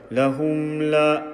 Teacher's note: the mim sakin sound we make it stick. We do not vowelize it.